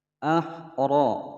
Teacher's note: Ahra, ra berharokat fathah dibaca tebal.